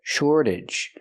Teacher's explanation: We see the T pronounced like a fast D because it's after an R and before a vowel. Shortage. And the AGE makes you sound idge, relaxed and closed.